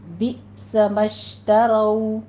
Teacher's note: رو مفخم پڑھی جائے گی، اس کو پر پڑھتے ہوئے ہونٹوں کو ناتمام گول کیجیے · بئس میں حمزہ کے اوپر جھٹکا دیں گے، مشترو شین کے اوپر تفشی کی آواز آئے گی